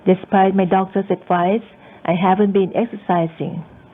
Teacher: we signal that we're finished in the second clause by using rise and falling intonation